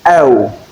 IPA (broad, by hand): əʊ